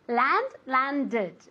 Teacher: Como termina en D, al añadir ed hay que añadir una sílaba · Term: extra syllable